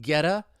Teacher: that T is going to become a flap T, and then I can link it with that vowel sound